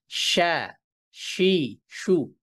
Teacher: শিনের ক্ষেত্রে আমরা কিন্তু একটা বাতাসের সঞ্চারণ পাচ্ছি মুখের মধ্যে